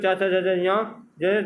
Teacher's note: च वर्ग जिसमें च जिसे तालु से बोला जाता है